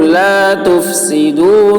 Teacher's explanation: فا بولتے وقت ہوا نکلے گی